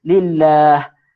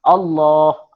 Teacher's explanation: Lillah, li, tu ni apa, li ni dia baris bawah, jadi dia sebutannya tak tebal, dia jadi nipis.